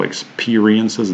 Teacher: Experiences here, the stress falls on the second syllable, so experiences, the E sound is stressed, and the first syllable, also the letter E, is unstressed, and it's a schwa sound